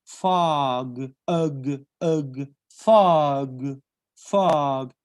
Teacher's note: the o is pronounced phonetically as an a